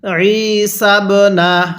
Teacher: আইনটা পড়ার সময় গলার মধ্যে চাপ দিয়ে পড়বেন